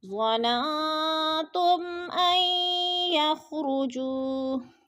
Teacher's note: میم ساکن کے بعد حمزہ حرف حلقے میں سے آ گیا ہے تو ادھر اظہار شفوی غنہ نہیں کریں گے